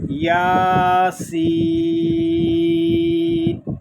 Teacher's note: کھڑا زبر مد لازم، یہاں مد لازم اس لیے ہو رہا ہے کہ یا مدہ کے بعد سکون اصلی آ گیا ہے